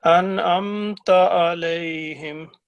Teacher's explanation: یہ تا ہے یہ باریک ہے، ایک تو اس کو موٹا نہیں کرنا آپ نے اور لمبا نہیں کرنا